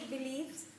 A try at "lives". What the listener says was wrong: Lives, not leaves. Pronunciation L-I-V-E-S. Lives.